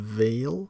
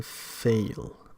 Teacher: English has both voiced and voiceless fricatives. There is a voiced labiodental fricative, V as in veil, and a voiceless fricative at the same point of articulation, F as in fail.